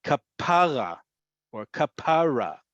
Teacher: The emphasis is on the second to last syllable.